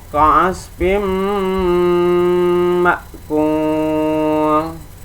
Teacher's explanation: suara nun sukun dan tanwin dileburkan, dileburkan membacanya, dan dimasukkan ke dalam suara sesudahnya, yaitu dengan didengungkan, ditekan dan ditahan 2 harakat sehingga suara nun sukun dan atau tanwin hilang. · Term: idgham biguna